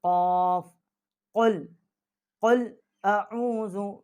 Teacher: یہ قاف جو ہے ہم اس کو موٹا کر کے پڑھیں گے